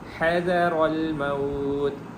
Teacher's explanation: ہا یہاں پہ حلق والی ہے، سینے والی نہیں ہے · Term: ہا حلق والی